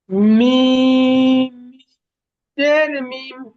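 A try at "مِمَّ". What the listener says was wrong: পরিষ্কার আওয়াজ আসলো না। মিম মিম, দুটো মিম বলতে হবে তো।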